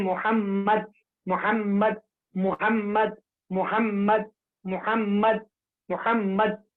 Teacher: मीम का मखरज दोनों होठों की खुशकी का हिस्सा